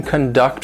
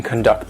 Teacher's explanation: don't confuse it with the noun conduct which means somebody's behavior this is the verb conduct the stress is on the second syllable